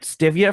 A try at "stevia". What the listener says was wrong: It's stevia. You put the emphasis on the wrong syllable.